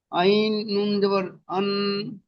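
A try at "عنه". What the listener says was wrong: আন, বানান করবার সময় গুন্না করলেন, গুন্না হবে না। আইন নুন জাবার আন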